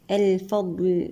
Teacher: الفضل، لام هنا لام قمرية مظهرة. الضاد هنا نأتي لها بالرخاوة والاستطالة والإطباق والاستعلاء. الفضل لازم نفصل الضاد عن حرف اللام، اللام مرقق.